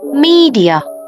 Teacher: Mọi người nhớ Nhấn vào cái âm đầu tiên nhé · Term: trọng âm